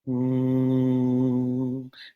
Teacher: the nasal passage as well as the oral cavity and then it crossfades into a kind of hum but with a slightly open mouth